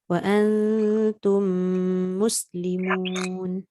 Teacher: Dekat wa an tu dah dengung, tum tu pun kena dengung.